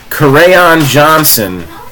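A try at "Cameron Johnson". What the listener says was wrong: Stop saying crayon. It's weird. You're saying crayon.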